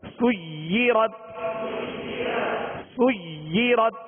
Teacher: تشدید ہے، ہا حرف مشدد ہے لہذا دو مرتبہ پڑھیں گے، مطہرتن، سیرت، سیرت، یا کو بھی جمعوں کے ساتھ پڑھیں گے، دوہرا پڑھیں گے، دو حرف کی یعنی دیر لگے گی اس کو ادا کرتے ہوئے